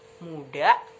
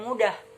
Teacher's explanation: Di kata muda tidak terdapat bunyi H, namun di mudah terdapat bunyi H.